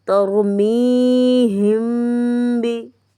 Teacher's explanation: اب میم ساکن کے بعد با ہے تو یہاں پہ غنہ بھی ہوگا